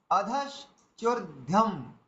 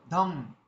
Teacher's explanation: এই অনুস্বরটা কিন্তু ম এর উচ্চারণ হয়ে গেল